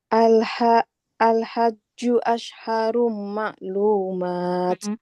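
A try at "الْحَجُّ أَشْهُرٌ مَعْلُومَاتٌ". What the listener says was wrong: Nggak asharu, ashhurum. Domah ya. Al-hajju ashhurum ma'lumat.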